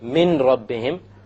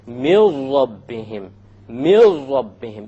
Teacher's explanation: So you don't say min rabbihim, you drop it. You drop the noon and you merge the meme with the ra. And you say, mil rabbihim, mil rabbihim, immediately. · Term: idgham